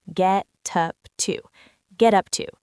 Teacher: The t in get connects to the u in up. Get up to get up to. · And the get up to links together heavily. The T in get connects to the U in up.